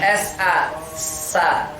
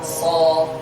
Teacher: sin sama shad itu sama letaknya. Bedanya tebal dan tipis. Cara menebalkannya bukan dengan bibir, tapi dengan mengangkat pangkal lidah itu menjauh.